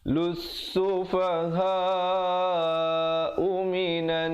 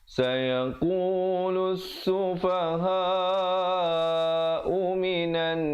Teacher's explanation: di situ nun sabdu didengungkan 2 harakat, wajibul gunnah.